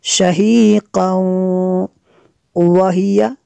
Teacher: تنوین کے بعد واو ہے حروف غیر معلوم میں سے، تو یہاں پہ ادغام ہوگا